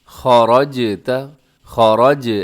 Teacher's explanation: خا موٹا را موٹا ہے اور جیم قلقلہ کریں گے، خَرَجْتَ، خَرَج، ایسے جیم کی آواز کو ڈبل کریں گے، خَرَجْتَ، آگے فَوَلِّ، فَوَلِّ وَجْهَكَ، جیم پھر قلقلہ ہے، شطر یہاں طا موٹا را بھی موٹا اور طا ساتھ قلقلہ بھی کرنا ہے۔